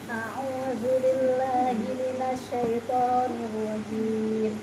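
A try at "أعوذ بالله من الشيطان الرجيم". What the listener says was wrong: Ketukannya ratakan, jangan a'udzu billah tapi a'udzu billahi minasyaitonir rajim.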